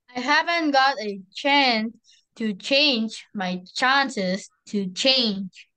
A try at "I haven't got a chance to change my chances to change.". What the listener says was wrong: That's too slow, though. This is a tongue twister.